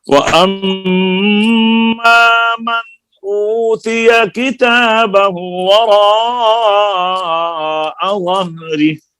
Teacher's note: व अम्मा के ऊपर मीम मुशद्दद है, गुन्ना होगा। · जब हम ठहरेंगे तो हा का सिला खत्म हो जाएगा, वह रिह हा साकिन हो जाएगी।